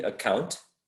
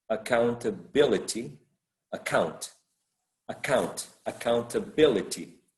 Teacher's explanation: So there is a shift of the stress in the word account, maybe the root might be count. Account is right, the second syllable, but accountability, is probably the fourth syllable, the one that is stressed.